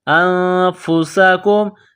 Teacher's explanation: نون ساکن کے بعد فا ہے تو یہاں پر غنہ کریں گے، آواز ناک میں چھپائیں گے۔ انفسکم، سین میں سیٹی کی آواز پیدا کریں گے، سین کو باریک کریں گے۔